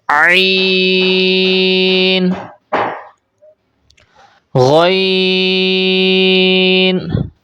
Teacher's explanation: غین کو بھی موٹی آواز سے پڑھیں گے اور حلق کے اوپر والے حصے سے ادا کریں گے · عین کو آپ نے حلق کے درمیان سے ادا کرنا ہے